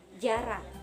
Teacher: Ciri-cirinya hidup, oral, laminopalatal, afrikatif. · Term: bunyi J